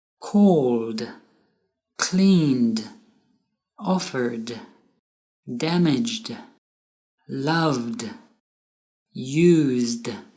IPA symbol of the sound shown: d